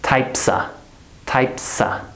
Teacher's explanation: So the sa becomes, or the S goes to the next word and it becomes sa. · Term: linking